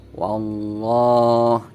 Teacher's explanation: atas huruf lam ini ada harokat fathah berdiri yaitu alamat panjang maka huruf lamnya dibaca panjang wallah dan ukuran panjangnya ini satu Alif 2 harokat